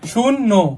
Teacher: জ ফলা থাকলে কি হবে? সংশ্লিষ্ট বর্ণের দ্বিত্ব হবে।